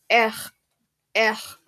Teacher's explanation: I made the sound from the back of my throat